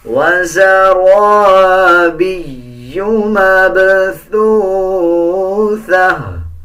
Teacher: اس یا کے اوپر شد ہے تو یا کو مضبوطی کے ساتھ ادا کیا جائے گا